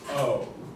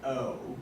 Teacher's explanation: in america it sounds like oh but in british it starts with the schwa sound and makes it the sound like oh yes and let's just